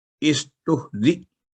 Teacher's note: हमजा पर सुकून की अलामत होगी, झटका के साथ पढ़ा जाता है